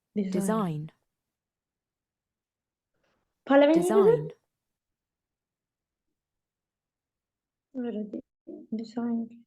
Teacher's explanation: The correct answer is the stress is on the second syllable design.